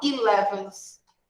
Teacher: A gente escreve com a letrinha E, mas fala com som de I